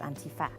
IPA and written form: ænˈtifə (Antifa)